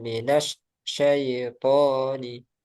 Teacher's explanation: Minas syai kayak dilepas, jadi harus disambung karena untuk rokhawahnya itu harus mengalir ya. Minas syaito, jangan dijeda.